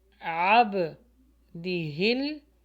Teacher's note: عب, یہاں پہ عین کا مخرج نکالیں, با کے اوپر جزم ہے تو یہ باؤنس بیک ہوگا یعنی قلقلہ ہوگا